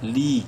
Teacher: لام یا زیر لی یا مدہ ہے، لام کو بھی ایک الف برابر لمبا کریں گے